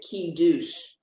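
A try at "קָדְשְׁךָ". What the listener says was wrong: No, ka. It's a cough, dalet, shin, and final cough. Final cough.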